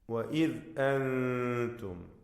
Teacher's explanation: സാക്കിന നൂനിനെ ഇഖ്ഫാ ഹഖീഖി നൽകി അവ്യക്തമാക്കി മണിക്കുക